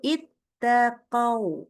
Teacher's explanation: Berhenti pada huruf wawu, nah huruf sebelumnya ini fathah, gitu ya. Maka wawu itu kita baca sukun dengan membacanya berupa sifat lin, nggak pakai panjang. Sifat lin itu berarti dia lembut.